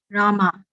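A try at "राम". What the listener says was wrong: No. No. Say Rama. Not Ra. Rama. Why not? Why not A? Because over A there is no dash. Only when on top of A there is dash, you make it A.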